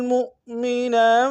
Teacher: وَمَن يَقْتُلْ مُؤْمِنًا، میم کو حمزہ کے سامنے لائیں گے، یہ حمزہ بشکل واو ہے، جھٹکا دیں گے